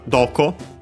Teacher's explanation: the interrogative accent on do itself